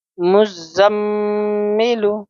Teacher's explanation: جس میم کے اوپر تشدید ہو اس پہ غنہ کے ساتھ پڑھیں گے، اور غنہ کی مقدار ہوگی ایک الف